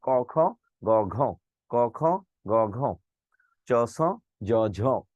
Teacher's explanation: জ ঝ বলার সময় গলার গোড়া জিহ্বার মধ্যে একটু কাঁপে।